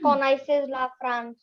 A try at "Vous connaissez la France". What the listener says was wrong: Very nice. Very good. But you read it in English.